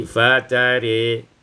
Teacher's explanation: ketika waqaf imalatu ra wal alif, dibaca imalah dan alif maka menjadi fatari